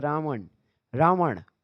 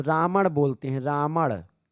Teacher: यह ण जो होता है यह ना बन जाता है अवधि में तो राण बोलते हैं राण जब अगर बोला जाता राण रमण